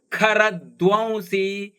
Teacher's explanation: ಧ ಕೂಡ ಮಹಾಪ್ರಾಣದ್ದು ವಕಾರ ಇದೆ